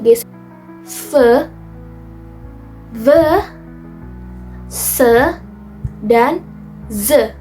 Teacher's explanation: fricative sound atau udara melewati celah sempit sehingga terdengar seperti ges ve the ve se dan ze selanjutnya ada nasal sound udara keluar melalui hidung. · Nah, contoh-contohnya ada P, B, T, dan D. Next ada fricative sound atau udara melewati celah sempit sehingga terdengar seperti gesek